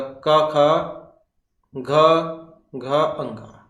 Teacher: क वर्ग, इसका उच्चारण किससे होता है? कंठ से होता है।